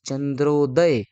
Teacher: मग इथं या ठिकाणी चंद्र अधिक उदय म्हणजे अ आणि उ ही संधी या ठिकाणी पाहायला मिळेल. म्हणजे ओ तयार झाला